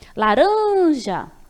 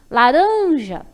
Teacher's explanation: a sílaba em que eu demorei mais vai ser a tônica. No caso, laranja, o ran. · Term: sílaba tônica